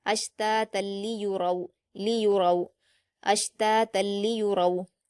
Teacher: रा पर वाऊ लीन है तो इसको मारूफ पढ़ेंगे और पुर पढ़ेंगे · را پر واولین ہے تو اس کو معروف پڑھیں گے اور پر پڑھیں گے